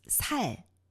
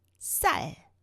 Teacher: The first one, it's a little longer vowel sound. And the second one shorter.